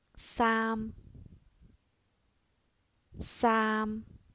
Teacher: a different tone the first tone is the high level tone if you start your voice high pitched and let it stay more or less the same high pitch throughout that is a high level tone